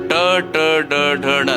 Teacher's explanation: ನಾಲಿಗೆಯನ್ನು ಸ್ವಲ್ಪ ತಿರುಗಿಸಿ ಹೇಳುವಂತಹ ಶಬ್ದಗಳು